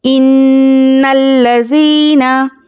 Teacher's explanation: नून पर तशदीद है, तो नून में गुन्ना करिए।